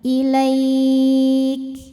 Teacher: Dan jangan lupa untuk mengeluarkan sifat hams dari huruf kaf ya. Ketika kafnya sukun, hamsnya atau angin yang keluar itu belakangan ya.